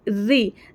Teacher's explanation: जबान की नोक नीचे ऊपर के दांतों के मसूड़ों के नीचे लगेंगी ठीक है अब जबान की नोक की पीठ ऊपर मसोड़ा रहे · र के नीचे जब जेर आ जाती है ना तो र को हम बारीक आवाज में पढ़ेंगे जबान की नोक नीचे ऊपर के दांतों के मसूड़ों के नीचे